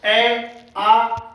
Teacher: होठ हमारे यहाँ गोल नहीं हो रहे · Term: अवृत्ताकार